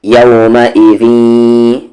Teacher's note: تنوین کے بعد یا ہے، ادغام وتھ غنہ، غننے کے ساتھ پڑھیں گے